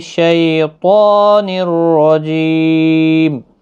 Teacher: شی یالین ہے، اس کو بھی نرمی کے ساتھ ادا کریں، طا حروف مستعلیہ ہے، پور پڑھنا ہے، اس کو کھینچنا بھی ہے ایک الف کی مقدار کے برابر